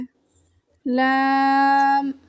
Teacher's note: जुबान के बारीक किनारे को ऊपर के मसूड़ों से लगाकर बारीक आवाज में पढ़ें